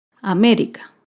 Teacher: américa se acentúa en la antepenúltima sílaba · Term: palabra esdrújula